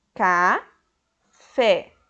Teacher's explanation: O som mais forte está na última sílaba, café. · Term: oxítona